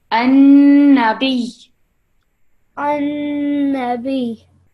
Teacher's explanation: Not B, because then it would become a letter of prolongation. We're not prolonging it, we're just making sure that we have the emphasis from the shadda.